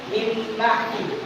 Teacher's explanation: Mim ba'di menjadi contoh iklab karena adanya nun sukun bertemu ba. Maka kita harus membacanya dengan menggantikan suara nun atau bunyi nun menjadi mim dan disertai dengung.